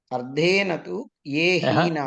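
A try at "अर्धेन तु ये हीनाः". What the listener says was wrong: అర్ధేన అనే తూ కలుపుతారు.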